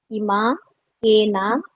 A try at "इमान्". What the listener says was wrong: No, Iman. Nakara, I'm not able to hear Nakara. Are you saying Nakara at the end?